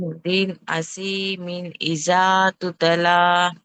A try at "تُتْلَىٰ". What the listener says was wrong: తుత్లా, తా మీద కలకల రాకుండా చూడాలి. తుత్లా అంటే తా మీద కలకలా చేస్తున్నారు, అలా రాకుండా తుత్లా.